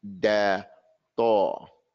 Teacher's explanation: the tip of the tongue and that which is behind the front teeth